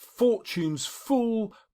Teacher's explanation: These are fricatives, and the fricative is used to symbolise aggression because the teeth come onto the lips in order to say it.